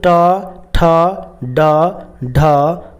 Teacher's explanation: ये भी मूर्धन्य वर्ण कहलाता है, क्योंकि उसका उच्चारण जो है ना मूर्धा से होता है